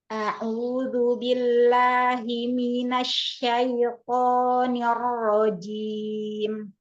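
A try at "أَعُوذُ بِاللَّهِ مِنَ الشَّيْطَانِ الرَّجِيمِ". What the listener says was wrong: Kasrohnya turunkan, jangan ner. Billahi minah. Billahi minasyaitoni. Kasroh turunkan rahangnya. Asyaitonir rojim.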